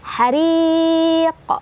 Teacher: Mad tabi'inya adalah ya sukun sebelumnya kasrah, huruf yang disukunkannya adalah huruf qaf. Cara bacanya dipanjangkan boleh 2, 4 atau 6 harokat. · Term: mada aridli sukun